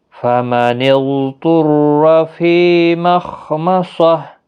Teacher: خا حروف مستعلیہ ہے، صاد بھی مستعلیہ ہے، دونوں کو پر پڑھنا ہے